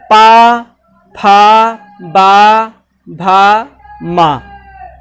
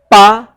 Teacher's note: जो अगर हम बोलते हैं पा, ऊपर और नीचे हमारा दोनों ओष्ठ हैं, दोनों मिल रहे हैं, स्पर्श हो रहे हैं, तो ये वर्ग आपका ओष्ठ वर्ग है।